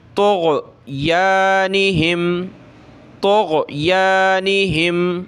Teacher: तो आपने इसको गैन को गले से निकालना है